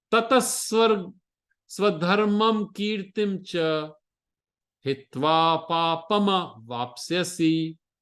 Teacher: So to take from tata to sa, that visarga becomes a sa.